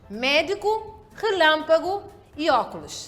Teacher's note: a sílaba tônica é a antepenúltima certo são classificadas como palavras esdrúxulas temos aqui exemplos médico relâmpago